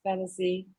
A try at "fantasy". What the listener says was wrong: Fantasy. Drag it a little lower. Fantasy.